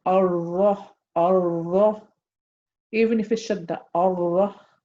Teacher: If I say Ar-Rah, this is incorrect because I'm exaggerating the repetition in the Ra.